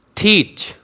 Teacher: T is giving hard sound means aspirated, but CH is giving the light and soft sound. teach, देखा आपने, थी hard sound और CH ने soft sound दी है, तो जब CH आखिर पे इस तरह से आता है तो इसको फिर 6 नहीं करेंगे।